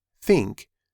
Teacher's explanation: Then, blow air. If you touch your throat while saying think, you should not feel any buzzing. The sound is soft, quiet, and airy. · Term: unvoiced TH, unvoiced th